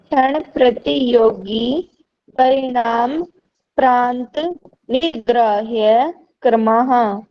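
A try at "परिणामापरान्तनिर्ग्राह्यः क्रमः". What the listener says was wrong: ठीक है जी, परिणाम नहीं है, परिणामा है। परिणामाप्रांत निर्ग्राह्य क्रमः, ठीक है।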